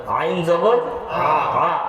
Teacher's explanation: গলার মধ্যে কোন ধাক্কা আসবে না কন্ঠনালীর মধ্যখান থেকে আমি বলার পরে বলার চেষ্টা করবেন আইন জবর